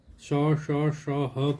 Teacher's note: ऊष्म इसलिए बोलते हैं कि इसमें हवा ज़्यादा निकलती है, संघर्ष ज़्यादा करना पड़ता है। ये संघर्षी भी कहलाते हैं, ऊष्म संघर्षी। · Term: ऊष्म व्यंजन